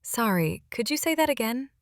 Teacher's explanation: I'll say, "Sorry, could you say that again?" with a gentle rise at the end. That little rise signals a question